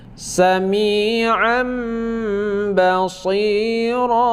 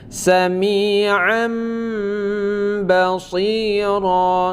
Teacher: Nah, apabila ada nun mati bertemu dengan huruf ba ataupun tanwin bertemu dengan huruf ba, maka terjadilah hukum iqlab. Iqlab ini dibaca berdengung, mana iqlab membalikkan bunyi nun mati kepada bunyi mim, ya.